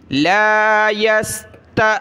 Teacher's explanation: हमज़ा साकिना झटका देंगे।